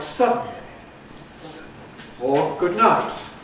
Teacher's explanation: we make a single articulatory gesture with the tongue and adjust the soft palate in the middle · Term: nasal release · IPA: ˌgʊd ˈnaɪt, [ˈsʌdn̩]